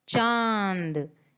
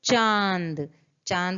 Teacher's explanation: जब भी हम चांद बोलते हैं तो हम आधा आवाज यानी आधा मुंह से और आधा नाक से निकालते हैं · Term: अनुनासिक